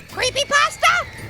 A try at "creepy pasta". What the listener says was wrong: Again, there's a space. You have to say it like there's a space between the two words. Again, there's a space between creepy and pasta. It's like a pause.